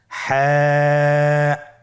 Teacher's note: হা হরফটি উচ্চারিত হবে কণ্ঠনালীর মধ্যখান হতে। গলা চিপে ধরে আপনি উচ্চারণ করুন।